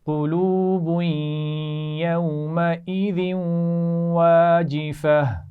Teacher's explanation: یومئذ ذال کے نیچے تنوین ہے، آگے واو سے ملا کر غنہ کرتے ہوئے پڑھیں گے اور آخر میں گول تا کو ہا ساکن سے بدلیں گے.